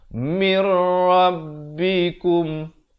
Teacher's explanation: Baik, di sini idgham bila gunnah. Asalnya min rabbikum jadi terus masuk tanpa dengung.